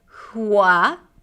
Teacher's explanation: So you start with an H sound, hua, close your lips, and then open it up for a W sound, hua, and then keen.